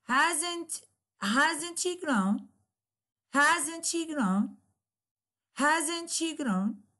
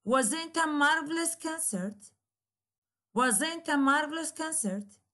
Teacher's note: So we will shed light on a negative yes, no question with the falling instead of rising tone, because we know with yes, no question, always there is a rising tone at the end of the question, while with the exclamatory question, there will be a falling instead of rising intonation